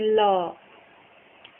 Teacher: जिनके उच्चारण में जिह्वा का अगला भाग मसूड़े को छूता है और वायु पार्श्व आसपास से निकलती है, उसे पार्श्विक बोलते हैं।